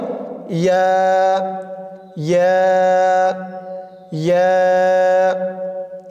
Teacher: জিহ্বার মধ্যখান তার বরাবর উপরের তালুর সঙ্গে লাগিয়ে উচ্চারিত হয় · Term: ইয়ার মাখরাজ